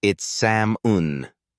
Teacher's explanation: We don't say the L.